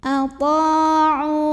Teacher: ain yang baris dhammah kita panjangkan dua harokat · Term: mad tabi'i